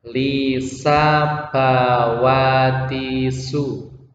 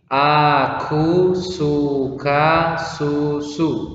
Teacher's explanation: Dalam mengucapkan huruf sin, sifatnya adalah tarkik, bukan tafkhim tapi tarkik. Tarkik itu artinya tipis.